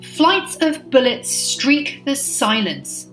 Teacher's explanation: flights of bullets streak the silence, which is a trochaic rhythm in line 16